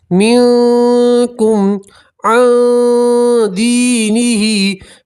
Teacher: यहाँ भी नून सकीन का इक्फा और एक अलिफ के बराबर गुन्ना करेंगे और यहाँ मीम सकीन का इजहार है, मीम में गुन्ना नहीं करेंगे। मिनकुम अन दीनिही, यहाँ मद्दा है इसलिए एक अलिफ के बराबर खींचेंगे और खड़ी ज़ेर भी यहाँ मद्दा की तरह है तो यहाँ भी आप एक अलिफ के बराबर खींचेंगे। · नून सकीन का इक्फा, एक अलिफ के बराबर गुन्ना करेंगे।